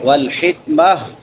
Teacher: آخر پہ تا کو وقفاً ہا سے بدل دیں گے، جہاں پہ بھی یہ گول تا آئے جب اس پہ وقف کریں گے تو اس کو ہا سے بدل دیں گے۔